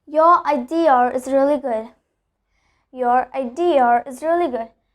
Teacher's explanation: you add an R between those two words to connect those two words. So here R acts as a connector, and it is also very important so that you can speak the sentence fluently and in a very fast manner.